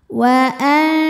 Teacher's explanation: Nun disamarkan ke syin disertai bunyi dengung dengung dan samarnya sama besar karena syin makhrajnya dekat E tidak terlalu dekat tidak terlalu jauh · hamzah suaranya tertahan, punya sifat namanya syiddah dari segi suara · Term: ikhfa Hakiki, ikhfa awsat